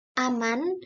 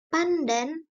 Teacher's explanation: perubahan bunyi N yang biasanya dalam bahasa Indonesia diucapkan secara apikoalveolar seperti pada kata aman, tetapi dalam kata pandan asal sebelum D diucapkan secara apikopalatal N. Perubahan nasal apikoalveolar N menjadi nasal apikopalatal N karena pengaruh secara regresif dari bunyi letuk palatal D. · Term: asimilasi regresif